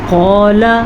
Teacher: قاف موٹی ہے، لام کو لمبا نہیں کریں گے، جبکہ یہ الف مدہ ہے، اسے ہم کھینچ کے پڑھیں گے